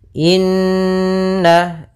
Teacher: ada bacaan gunah yaitu kita panjangkan dua harakat surah nnya karena di sini gunah ya ada Nun bertasdid ditandai